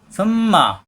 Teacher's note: সুম্মা মিমে তাসদীদ অজিব গুন্না, সু নরম করে।